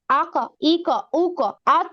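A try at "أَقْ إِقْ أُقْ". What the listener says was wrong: আপু উচ্চারণটা কেমন যেন আকা এরকম। আমরা খেয়াল করি কফ জবর ক হয়, কফ জবর কা হয় না, ঠিক আছে? তাহলে উচ্চারণটা হবে আকো, আকা এরকম হবে না।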